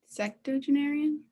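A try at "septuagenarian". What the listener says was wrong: Close. I think you said, did you say secto or septo?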